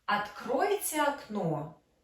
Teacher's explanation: We stress the first word, откройте. Open the window, because for us it's important, the person helps us to open the window.